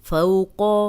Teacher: قوف کو موٹا پڑھیں گے، لمبا ہونے سے بچائیں گے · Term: واو لین